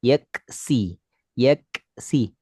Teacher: Harusnya selesaikan kaf baru berdesisi.